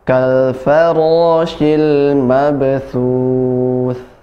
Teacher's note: tha ujung lidah bertemu dengan ujung gigi sari atas, dan sukun yang disukunkan pun tha juga, ujung lidah yang bertemu dengan ujung gigi sari atas. · Untuk huruf tha ini dia hamas, ya, nafasnya mengalir. Jadi tidak boleh dihilangkan nafasnya. Ada nafasnya sedikit.